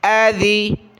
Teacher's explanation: یہاں ذال پر زبان نکالیں، نرمی کے ساتھ ادا کریں